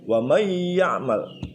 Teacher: Bukan waman ya'mal, tapi sudah berubah menjadi wa may ya'mal ya.